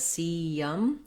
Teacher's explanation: You might notice when I say cium that when I'm moving from that E front tense vowel to the central relaxed schwa, that there's a little bit of a y sound in there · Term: glide from vowel to vowel